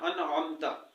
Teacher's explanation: انعمتا میں بھی عین ہے، حمزہ یا ہا نہیں ہے